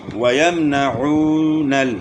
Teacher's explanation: وَيَمْنَعُونَ یہاں عین کی آواز کو گلے کے درمیان سے ادا کریں گے اور وہ مدہ ہے یہاں تھوڑا کھینچیں گے.